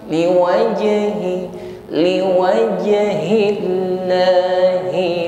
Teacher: Huruf jim sukun sama memiliki sifat qalqalah. Pantulkan ya, qalqalah shighrah namanya, pantulan ringan saja.